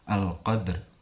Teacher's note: Cara membacanya dengan cara dipantulkan tetapi tidak terlalu kuat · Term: qalqalah sughra